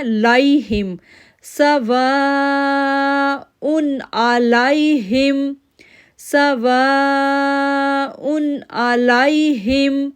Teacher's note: اب یہاں پر لائی پڑھنا ہے، لئی نہیں پڑھنا. اگر ہم علیہ پڑھیں گے تو یہ لین لیٹر ہے، نہ تو یہ زبر میں رہے گا اور نہ زیر میں رہے گا، اس لیے اپنے پڑھنا ہے لائہم، سواء علیہم، سواء علیہم.